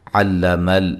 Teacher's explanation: علم الانسان ما لم يعلم، علم، لام کو ہلانا نہیں ہے، ٹھیک ہے۔ عین، لام، میم تینوں باریک حروف ہیں، کسی کو موٹا ادا نہیں کرنا، لمبا نہیں کرنا، ٹھیک ہے۔